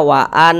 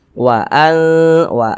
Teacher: Cara membaca ikhfa itu dibaca samar dan berdengung.